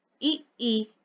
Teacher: उच्चारण में मुख द्वार लगभग बंद रहता है। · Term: संवृत